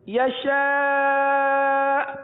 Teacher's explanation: حمزہ ساکنہ کو جھٹکا دے کر پڑھتے ہیں اب یہاں آخر میں ہلکا سا جھٹکا ہوگا یہ دیکھیے یشاء